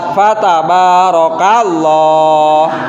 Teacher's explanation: Nah, banyak panjang karena di sana ada fathah yang berdiri. Terus lafadz Allahnya di sana harus dibaca tafhim atau harus dibaca tebal.